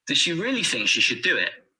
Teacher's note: here really think and do are stressed does and should are weak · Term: sentence stress